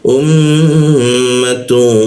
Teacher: Lalu U gunakan hamzah atau alif posisinya di ee tenggorokan bagian bawah. Um bertemu mim bertasdid. Kita tahan dua katukan. · Kita dengungkan. Lalu kita tahan dua ketukan di dengungnya. Um. Ditahan juga dua ketukan.